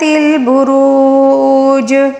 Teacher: اب جو ہے یہاں پر ہم وقف کریں گے تو وقف کے دوران جو زیر ہے اس کو ہم ساکن دے کر پڑھیں گے، تو اس لیے واو مدہ کو ہم نے 3 الف کے برابر کھینچ کر پڑھنا ہوگا